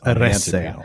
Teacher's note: the second last syllable is the E with the diaeresis on it, which is a light syllable. It's short. It doesn't have any consonants after it. No. And so therefore the stress has to go on the third last.